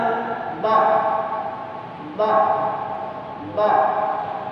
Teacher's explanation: cara mengucapkan huruf do bukan dari ujung lidah, tapi pinggir lidah. Pinggir lidah dari pangkal pinggir lidah sampai ke gigi, menempel ke gigi geraham bagian atas yang kanan atau kiri atau keduanya.